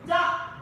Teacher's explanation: Okay, middle tone. Then da, not low, but it's high tone.